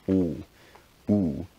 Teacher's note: in favor of back rounded vowels here so things like oh where the tongue is towards the back of the mouth and the lips are rounded